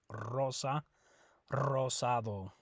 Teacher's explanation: when you have an R right at the beginning of the word you also roll that R